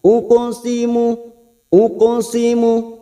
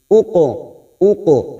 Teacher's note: huruf q ini tebal maka cara memantulkannya agak sedikit memonyongkan bibir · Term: qalqala sugro